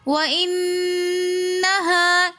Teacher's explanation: یہاں پر ہم نے نون مشدد ہونے کی وجہ سے غنہ کیا. پھر وَإِنَّهَا میں الف مدہ ہونے کی وجہ سے ہم نے وَإِنَّهَا ایک الف کی مقدار کھینچ کر پڑھا.